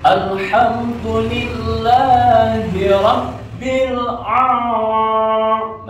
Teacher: ba-nya itu bertasdid. Jadi harus ditekan, gitu ya, harus ditekan dimasukkan.